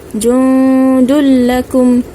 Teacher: Nun mati tanpa tanda, ini adalah tanda bacaan dengung. Kita baca panjang 2 harakat.